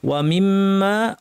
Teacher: ওয়া মিম্মা মিমের উপর তাসদীদ, আবার পরে আলিফ, দুটাতেই টাইম দিতে হবে। মিম এখানে সময় দিতে হবে, মা টানার জন্য আলিফে সময় দিতে হবে।